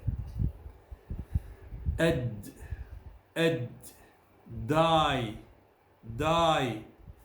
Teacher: So the tongue starts in the same position against the alveolar ridge, and the lower jaw is pulled down and the tongue withdrawn from the ridge to release the pressure. However, as this is a voiced sound, there will be no rush of air, but only a tiny explosion. Don't forget to check on your vibration, either with your fingers on your Adam's apple or by covering your ears.